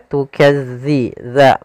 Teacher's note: makhrajnya agar sempurna kita lafalkan dari ujung lidah kita menempel dengan gigi dari atas.